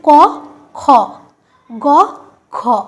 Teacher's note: ক আর গ হচ্ছে অল্পপ্রাণ আর খ আর ঘ হচ্ছে মহাপ্রাণ